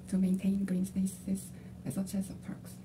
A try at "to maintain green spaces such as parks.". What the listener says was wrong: L 사운드하고 R 사운드에 대한 부분을 명확해야 되고요. V 사운드. V하고 R 발음을 신경 써서 체크하세요. V하고 R. V하고 R이 지금 다 틀려 발음이. 이거만 신경 쓰는 발음 아쉬워요.